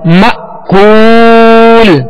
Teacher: حمزہ ساکنہ میں جھٹکا دینا ہے